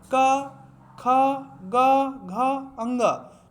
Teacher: जिन व्यंजन ध्वनियों के उच्चारण में जीहा के पिछले भाग से कोमल तालु को स्पर्श होता है उन्हें कंठ ध्वनियाँ कहते हैं। तो कहते हैं ये पहला वर्ग होता है का खा गा घा अंगा। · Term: कंठ व्यंजन